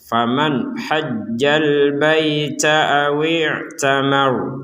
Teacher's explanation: ada nun sukun bertemu ha, maka kita bacanya dengan jelas